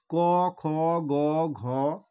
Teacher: ক, খ, গ, মানে এইভাবে তোমরা উচ্চারণ করে দেখো এটা কোথা থেকে উচ্চারণটা আসছে না কণ্ঠ থেকে। মুখের ভেতর তোমরা বুঝতে পারবে যে কণ্ঠ থেকে এই আওয়াজটা বেরিয়ে আসছে